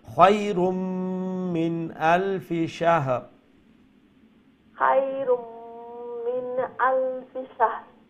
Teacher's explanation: তানবিনের উপরে মিম ইদগাম মা গুন্না, গুন্না সহিত ইদগাম।